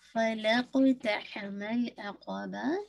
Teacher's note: ہا کو انشاءاللہ مڈل آف حلق سے نکالیے گا